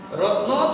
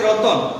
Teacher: তাহলে স্বরধ্বনিটা মাঝখানে চলে আসছে, রত্ন থেকে রতন মাঝখানে চলে আসলে এটাকে বলা হয় মধ্য স্বরাগম